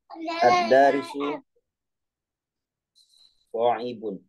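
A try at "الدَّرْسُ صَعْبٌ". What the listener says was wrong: Ad-darsu, bukan darisu. Ad-darsu.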